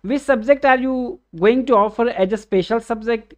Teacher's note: the tone used by me is rising tone because it is a question